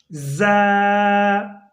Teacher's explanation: یہ زا پڑھتے ہوئے اس طرح زا ادا کرنی ہے جیسے سیٹی کی آواز نکلتی ہے۔ زا ادا ہوتی ہے زبان کی نوک اور اوپر نیچے کے دانت جب آپس میں ملتے ہیں تو زا ادا ہوتی ہے۔